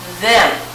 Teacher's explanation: when you said the word them you could feel it buzzing in your throat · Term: buzzy